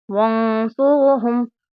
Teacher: نون کی آواز کو ہم ناک میں چھپا کر پڑھیں گے